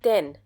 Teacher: Denn has a double N at the end. Hence, the sound of A will be shorter.